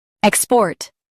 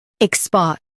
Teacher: Stress EK in US, SPA in UK.